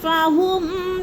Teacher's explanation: فہم کو بھی ظاہر کر کے پڑھیں گے، ادھر غنہ نہیں کرنا، اظہار شفوی ہے۔